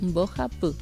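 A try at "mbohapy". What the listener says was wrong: Perfecto.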